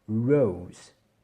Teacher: Ici on a une diphtongue, c'est-à-dire que dans la lettre O, finalement on aura deux sons. On a O, et on a aussi une petite partie du son qui est E.